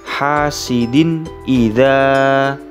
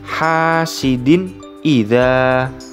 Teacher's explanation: tanwin di sini yang terdapat pada huruf dal bertemu dengan hamzah harus dibaca dengan jelas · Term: idhar